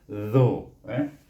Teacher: dia punya mahraj iaitu belakang hujung lidah bertentangan dengan gigi kacip, keluarnya huruf zal. Jadi bila baris depan bunyi zu.